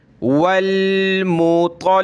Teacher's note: लाम को सख्त करेंगे क्योंकि इसके ऊपर ये तशदीद है